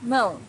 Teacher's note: Mão's a little bit difficult to pronounce for beginners because of this nasal sound